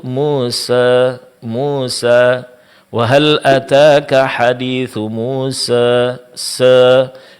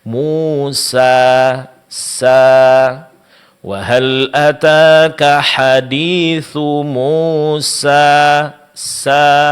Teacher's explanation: sempurnakan pengucapan harakat fathah sebelumnya dan panjangkan menjadi dua harakat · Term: mad alif